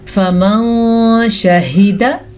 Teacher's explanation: हम नून साकिन की आवाज़ को छुपे हुए गुन्ने के साथ पढ़ेंगे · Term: इख्फा